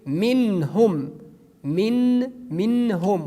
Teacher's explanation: We pronounce the noon frankly because after noon, which is sakin here, we have the letter ha. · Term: izhar